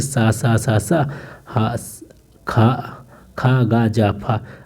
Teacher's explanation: अब केवल संघर्षी देख लेते हैं जिनके उच्चारण मुख द्वार इतना संकीर्ण हो जाता है।